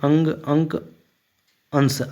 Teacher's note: अनुस्वार के उच्चारण में नाक से अधिक सांस निकलती है और मुख से कम ठीक है अनुस्वार के उच्चारण में आपका क्या होगा देखिए नाक